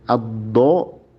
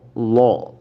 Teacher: berusaha mengucapkan huruf dod yang fathah, tapi malah tidak sadar mengucapkan huruf lam yang tebal ya. Dod tapi menjadi lam ya.